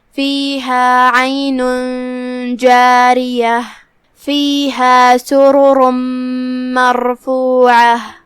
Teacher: کلمت سرر میں یہاں را پہ پیش ہے، را کا حکم ہے تفخیم، تو ہم را کو بھاری آواز میں ادا کریں گے